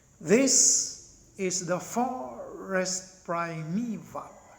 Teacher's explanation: it's the first syllable which is stressed or accented, and the remaining two syllables in the meter are unaccented. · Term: dactylic meter